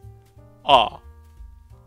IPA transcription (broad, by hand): ɑ